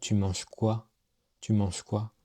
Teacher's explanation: La prononciation monte à la fin. Et ça, c'est une question. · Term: rising intonation